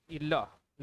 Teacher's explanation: लेकिन ल को बोलते हैं किस प्रकार का, पार्श्विक प्रकार का